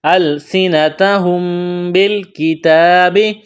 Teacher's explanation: میم ساکن کے بعد با ہے تو یہاں آواز ناک میں چھپائیں گے، غنہ کریں گے۔